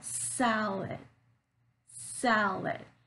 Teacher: I'm stressing on sal, that first syllable, and the vowel sound in that syllable is longer, it's much more clear than the second syllable where I said lit, lit, right?